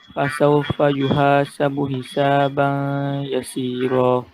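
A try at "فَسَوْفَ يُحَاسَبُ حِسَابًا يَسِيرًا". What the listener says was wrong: Awak tak dengung situ. Awak tak idgham situ. Fasawfa yuhasabu hisaban jelas suara Ustaz. Ban yasira.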